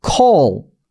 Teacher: call이 아니에요. 그러니까 그냥 O 발음이 아니에요. 이것도 그 open O입니다.